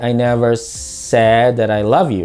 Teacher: you stress on the word I, then never, and then said. Depending upon the word you emphasize, the statement takes on an entire different meaning. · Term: stress or emphasis